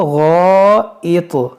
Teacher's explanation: اب یہاں پر رک جائیں گے تو غائط، اس تو میں قلقلہ کر کے رکیں گے